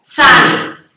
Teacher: the end and middle part of the tongue goes up and blocks air to push out. The throat goes up to leave the tongue to the upper teeth.